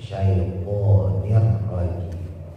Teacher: syinya ditebalin ujung lidah taruh di atas sya dimonyongin juga